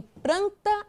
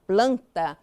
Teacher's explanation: a troca do L pelo R, resultando em pranta em vez de planta